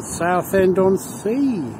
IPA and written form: ˌsaʊθɛndɒnˈsiː (Southend-on-Sea)